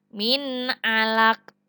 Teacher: Kalau nun mati bertemu dengan ain ini dibacanya adalah izhar atau jelas. Nun mati bertemu dengan ain. Dibaca jelas, tidak boleh dengung.